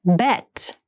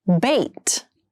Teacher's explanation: Bet has the more open sound and bait has the more closed sound.